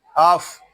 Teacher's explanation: آگے فا ساکن ہے، اس کو سکون کے ساتھ ادا کریں گے، اس میں جنبش نہیں ہونی چاہیے. اس کو اف اس طرح نہیں پڑھیں گے، اس کو پڑھیں گے اف.